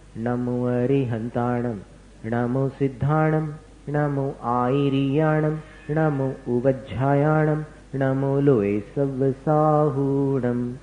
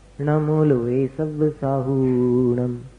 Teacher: नमो लोए सव्वसाहूणम, हु दीर्घ होना चाहिए।